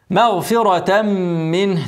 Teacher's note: تنوين بعده ميم ادغام بغنه هغن حركتين ومنه زي ها منه